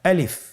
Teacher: আলিফে কিন্তু কোনো টান নেই, আপনারা বুঝতে পারতেছেন। আমি যখন আলিফ বলছি এর মধ্যে কোনো টান হবে না